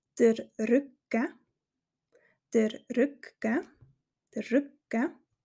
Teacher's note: hörst du dass eine kleine Pause vor dem G gesprochen wird